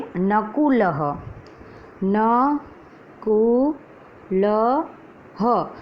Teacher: तो शब्द में सर्वप्रथम है नकुलः, न कु ल ह। जो विसर्ग है उसका उच्चारण ह से होता है